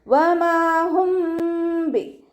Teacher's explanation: മീം സാക്കിനയ്ക്ക് ശേഷം ഇഖ്ഫാഇൻ്റെ ലെറ്ററായിട്ടുള്ള ബാ വന്നിട്ടുണ്ട്. അപ്പോൾ നമ്മളവിടെ മീം സാക്കിനയെ മറച്ച് വെച്ചിട്ട് മണിച്ചോതി കൊടുക്കണം കേട്ടോ. മീം സാക്കിനയുടെ നിയമത്തിലുള്ള ഇഖ്ഫാ ആണ് ഇവിടെ വന്നിട്ടുള്ളത്.